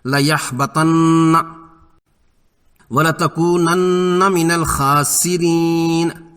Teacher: پڑھیں گے وَلَتَكُونَنَّ، خا حرف مستعلیہ ہے، پر اور موٹا ہوگا اور کھڑی زبر کی وجہ سے الف مدہ کے قائم مقام ہے، 2 حرکات لمبا۔ را زیر کی وجہ سے باریک پڑھنی ہے یہاں، یعنی ترقیق سے